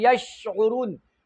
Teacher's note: یشعرون شین کې تفشیم دی، او اواز په ټوله خوله کې خور شو، تفشی دی ته وایي.